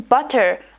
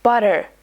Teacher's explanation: in many parts of America, the letter T gets softened when it's between vowels. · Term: flap T